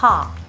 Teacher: we're blowing air out of the mouth on purpose on the vowel to make sure it's an oral sound